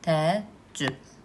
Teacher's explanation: Təəccüb sözündə qoşa əyələrdən biri düşür.